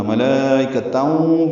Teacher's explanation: ملانا ہے کیونکہ صاد ہے، وصل کی علامت. ادغام ہوگا، ادغام ناقص مع الغنہ. ملائکتاؤں پڑھیں گے.